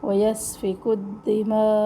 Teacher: دھیان رکھے تشدید کے اندر دال ہے، پہلا دال ساکن ہے تو اس دال پر قلقلہ نہیں ہوگا